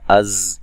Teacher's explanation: ज़ा को सीटी से अदा करेंगे, सख्ती से अदा करेंगे